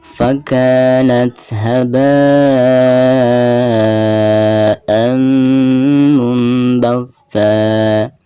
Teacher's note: huruf ta di sini adalah merupakan salah satu daripada huruf al-hamz ya. Maka ketika membacanya harus ada nafas yang mengalir keluar.